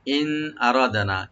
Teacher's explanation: নুন সাকিন আমরা এখানে জাহার করব, গুন্না হবে না। ইন যেহেতু নুন সাকিনের পরে এখানে হামজা আসছে নেক্সট শব্দে।